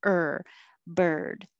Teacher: you're just putting your tongue in the r position er and making noise